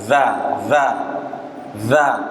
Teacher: huruf dalzal keluar dari ujung lidah dengan dua gigi seri atas